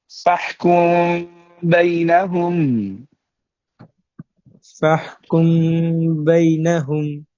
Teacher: মিম সাকিনের পর যদি বা আসে তাহলে উক্ত মিমকে গুণনা করে পড়তে হয়, এবং ঠোঁটের মাঝখানে অল্প একটু ফাঁকা রাখতে হয়। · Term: মিম সাকিন ইকফা